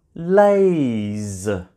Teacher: This time we have the Z sound at the end of the verb and Z is made by my vocal cords. It's actually a voiced consonant sound.